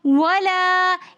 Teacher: الف مدہ ہونے کی وجہ سے ہم ولا ایک الف کی مقدار کھینچ کر پڑھ رہے ہیں